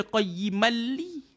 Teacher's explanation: Nama dia idgham bila ghunnah. Masuk tapi tak dengung. · Jadi dia tak dengung. Sebab apa jumpa dengan dua huruf ni tuan-tuan, kita masuk tak dengung. Nama dia idgham bila gunnah. Masuk tapi tak dengung.